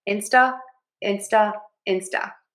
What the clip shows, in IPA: ˌɪnstəˈleɪʃən